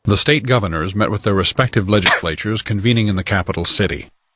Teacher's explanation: The state governors met with their respective legislatures convening in the capital city, with the cough inserted. However, the first S in legislatures does not exist at all. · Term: phonemic restoration effect